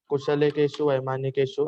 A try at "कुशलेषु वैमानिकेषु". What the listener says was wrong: No, I'm saying that only. Not Kushalakeshu. Kushal ke baad don't add ka.